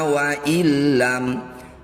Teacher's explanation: Nun sukun bertemu lam disebut bacaan idgham bila gunnah. Bunyi nun sukunnya langsung masukkan pada lam tanpa didengungkan.